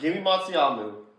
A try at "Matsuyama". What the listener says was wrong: You can't even pronounce his name. It's Yama. There's an A. That is disrespect on the family and tradition. Matsuyamu. It's Matsuyama.